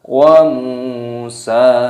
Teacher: Dhammah ada wawu sukun, dipanjangkan matobi'i dua ketukan, dan huruf sinnya di sini dibaca panjang.